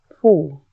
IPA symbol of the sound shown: fɔ: